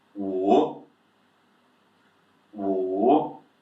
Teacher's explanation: number 5, 3rd tone, dropping a little bit and upwards. Yeah, so down and up with your pronunciation. · third tone dropping a little bit and upwards.